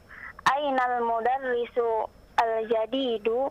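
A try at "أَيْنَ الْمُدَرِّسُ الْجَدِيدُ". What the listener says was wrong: Disambung sekarang. Ainal mudarrisul. Begitu.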